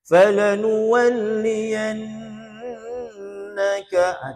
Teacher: Tu nun sabdu tu dengung. Mesti dengung. Tak dengung salah. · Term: Wajibul gunnah